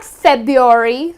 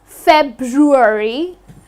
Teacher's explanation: So it's not FEBUARY , so many of us drop the R while pronouncing it and as well as writing it, the correct pronunciation of this second month of the year is FEBRUARY, okay and do not forget to add that R here.